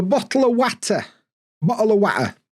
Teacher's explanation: we love glottal stops so much in Yorkshire